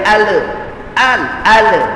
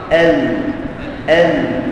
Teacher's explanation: untuk mengeluarkan lam daripada tepi lidah ya kita selalu sebut Al tapi orang Arab sebut El ha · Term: inhiraf